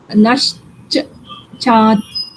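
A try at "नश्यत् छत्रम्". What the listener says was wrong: Nasht, why? There is a yakar also, no? No, just change first saying nashyach, then chatram. Now combine. Nashyat chatram.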